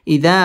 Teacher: মধ্যে তাবাই এক আলিফ টেনে পড়তে হবে